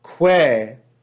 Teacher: the ecclesiastical pronunciation of that diphthong a-e is pronounced just like e